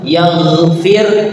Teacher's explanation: Ya, perhatikan huruf gha ya, tidak boleh memantul, tidak boleh, yaghfir itu memantul, atau gha-nya tidak terbaca, yaghfir, atau pakai kha, yaghfir, itu salah huruf ya. Harus pakai gha tapi ditarik ke belakang, ke bagian halak ditariknya, tenggorokan.